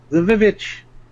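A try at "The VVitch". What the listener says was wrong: I'm already tired of it, because that's not how you pronounce the double V sound. Davitch. Davitch.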